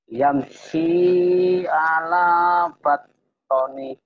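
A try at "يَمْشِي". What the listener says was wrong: Ya, shin-nya ya masih kurang ya, enggak apa-apa.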